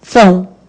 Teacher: Esse O tem som de U. Então, você tem um ditongo.